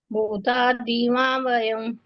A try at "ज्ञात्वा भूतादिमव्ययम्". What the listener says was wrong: माव्ययम् नहीं है, ज्ञात्वा भूतादिमव्ययम्। हाँ व्ययम है, ठीक।